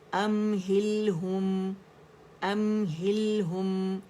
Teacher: ہم نہیں ہوگا، ہم تم کم والا نہیں ہوگا. ہو کی آواز آنی چاہیے، یعنی گولائی دینی، اندر سے بھی آواز گول ہو، پائپ سے آواز گول نکلے